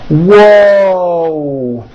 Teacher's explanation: There's a W sound at the beginning of that, but there's also a hidden W sound at the end. Whoa. And my mouth is also very forward and tight.